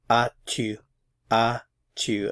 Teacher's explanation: Again, the S is not pronounced.